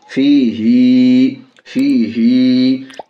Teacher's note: तो बियमीनी, हा खड़ी ज़ेर ही, हा के नीचे खड़ी ज़ेर है, खड़ी ज़ेर बराबर है या हर्फ मद्दा के, इसलिए खड़ी ज़ेर को थोड़ा खींच कर पढ़ेंगे।